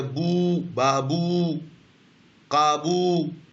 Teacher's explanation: با کے اوپر جب پیش تھا اس کو بو, اس کو لمبا کھینچ دیا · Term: حروف مدہ